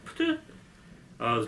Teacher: Нам надо как-то сознательно контролировать себя, делать какую-то паузу между звуками, чтобы они раз и не перескочили. Два глухих подряд «пт» легко, два звонких – подряд «бд» легко, а звонкий и глухой вместе, они не приживаются, они плохо звучат.